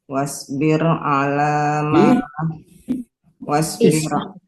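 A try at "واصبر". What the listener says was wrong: Nggak ada wawunya kan?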